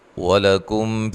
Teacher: واو کو ادا کرتے ہوئے ہونٹوں کو گول کرنا ہے۔